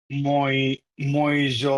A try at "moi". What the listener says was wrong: No no, it's not মই। এই যে আমাদের রুলস এর মধ্যে অনেকগুলো শব্দ ছিল এমন, কোথায় কোথায় কোথায় এইগুলা বলেছিলাম যে ও ই থাকলে আমরা ওটাকে ওয়া বলবো। কি বলবো? ওয়া। ওয়া বলেন, ওয়া, তাহলে ওটা কি হবে? মোয়া।